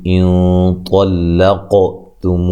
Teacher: لا الف مدہ ہے، جو نا الف مدہ ہے، حا کو لمبا نہیں کرنا، علی لین ہے، کم کاف کو باریک پڑھنا ہے، اور یہاں میم ساکن کا اظہار ہے، غنہ نہیں کریں گے۔ یہاں نون ساکن کا موٹا اخفا ہے، ٹھیک ہے، اخفا کریں گے، موٹی ادائیگی ہوگی غنے کی۔